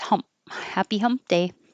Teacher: You won't hear the P. Just close your lips.